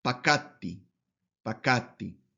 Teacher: En el primero, como un singular, entonces esa palabra es pakatti, pakatti, aplicando la regla del sheva en la tercera radical, que no se pronuncia la vocal